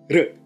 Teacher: using a flap rather than a trill sound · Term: vocalic r